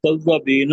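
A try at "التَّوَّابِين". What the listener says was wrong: तव्वाबीन, लंबा करें ना।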